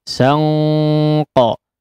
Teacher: Ini di sini betul-betul menjadi ang, ya, ang, tapi bersiap untuk mengucapkan huruf qaf, sehingga karena huruf qaf adalah huruf isti'la, maka ikhfanya pun, ya, menyerupai qaf, ya, atau mendekati suara qaf, ya, mendekati suara qaf dan cenderung menjadi tebal, ya, dan memang menjadi tebal.